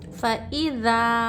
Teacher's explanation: अलिफ से पहले ज़बर, अलिफ मद हो रहा है, यहाँ पर खींचना चाहिए 1 अलिफ के बराबर।